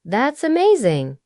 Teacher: When native speakers say that's amazing, the word amazing often has a rising tone, light and full of warmth